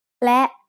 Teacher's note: สระแอะ สระแอ One very common word that is written using สระแอะ is และ which means and. และ is a high tone because it has an initial low-class consonant with a short vowel and a dead stop.